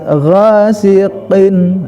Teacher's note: Syarri ghasiqin nah jadi al istilana ada karena si qaf ini memiliki huruf al istila ghasiqin ya, jadi taikkan tetap si ujung pangkal lidah ke atas langit-langit, jangan terkontaminasi dengan kasroh itu